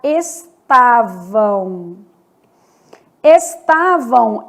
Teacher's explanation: Esse M do final vai ter som de U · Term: semivogal